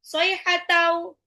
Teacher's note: tanwin ketemu waw itu adalah idgham bi gunah, tanwinnya lebur ke waw ditahan 2 sampai 3